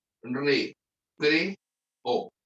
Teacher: Dos vocales fuertes. Cada una forma su propia sílaba. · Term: hiato